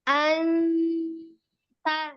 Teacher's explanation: Nah, tapi dari segi suara ikhfanya, dia termasuk yang ikhfa a'la, tinggi gitu ya. Jadi suara samarnya itu lebih tinggi daripada suara gunnahnya, suara dengungnya.